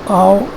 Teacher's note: آ جو ہے فرنٹ ہے اور لو ہے، اور او بیک ہے اور ہائی ہے. تو یہ لو سے ہائی کی طرف، فرنٹ سے بیک کی طرف جاتا ہے.